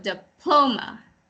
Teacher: Diploma. The accent is on the second syllable.